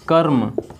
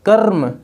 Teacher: अच्छा, इसको थोड़ा अलग कर लीजिए, तो अलग कर लीजिए कर्म को अलग करेंगे तो क्या पाएंगे आप, र बिना स्वर का और म, कर्म। कर्म झटके से र को बोल रहे हैं क्योंकि यह स्वर रहित है, बिना स्वर का है। तो जो बिना स्वर का होता है उसको झटके से बोलते हैं ना, तो यह क्या हो जाएगा, कर्म।